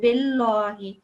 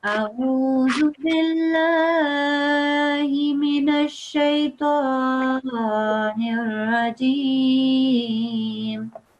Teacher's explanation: if beforehand there's a kasra, a line underneath, then we don't say it in a thick way.